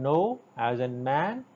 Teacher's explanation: Oral passage is blocked by pressing the tongue tip against the alveolar ridge, and that's why it's an alveolar sound. And for the manner of articulation, it is nasal sound.